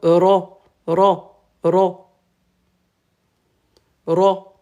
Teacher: on roule le r le bout de la langue